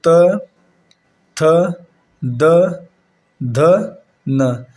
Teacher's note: जो त वर्ग में आते हैं वो दंत होते हैं